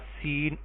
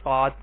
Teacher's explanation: زبان کی نوک اوپر اور نیچے دونوں دانتوں کے کناروں کو ملاتے ہوئے ہلکی سی ٹچ کریں گے اور سیٹی کی آواز سے یہ دونوں حروف ادا کریں گے۔ سین کو باریک کر کے پڑھیں گے اور صاد کو پر کر کے پڑھیں